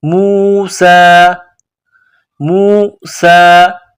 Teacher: وَإِذْ قَالَ موسیٰ, میم واو پیش مو, سین میں سیٹی کی آواز پیدا کرنی ہے, سین کو باریک کرنا ہے. سین کڑا زبر سا, موسیٰ, موسیٰ.